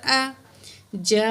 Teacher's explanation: یہ 5 کاؤنٹ ہم نے یہ بڑی مد ہے کھینچ کے پڑھنی ہے، مد متصل ہے